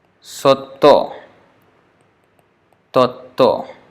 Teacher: When there is this half vowels with the consonants like TYA, like Satya or Tattva, they become Sotto, Totto.